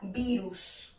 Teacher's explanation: la sílaba tónica se encuentra en la penúltima sílaba